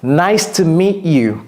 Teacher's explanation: Vous voyez que j'ai pas prononcé le T, j'ai pas dit nice to meet you. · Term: avalez le T